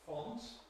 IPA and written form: fɒnt (font)